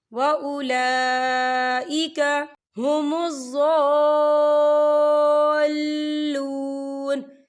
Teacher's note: وَأُولَئِكَ، یہ دیکھیں وَأُولَا لام کے اوپر کھڑی حرکات ہے اور اس پر مد بھی ہے تو ہم اسے 4 حرکت کے برابر کھینچ کے پڑھیں گے۔